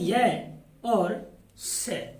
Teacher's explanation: इन वर्णों का उच्चारण तालु से होता है, इसीलिए इन वर्णों को तालव्य वर्ण भी कहा जाता है।